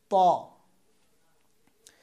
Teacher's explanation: ত জিহ্বার আগা উপরের এই দুই দাঁতের গোড়ার সাথে লাগাতে হবে।